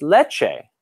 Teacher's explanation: what a ch sound is it's a t followed by a sh